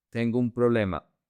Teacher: A very common phrase is tengo un problema. Tengo un problema. You connect the O and the U.